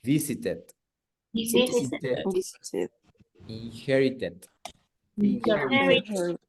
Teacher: Los últimos tres, started, visited, inherited, son los únicos que sí se pronuncian como tal ed o it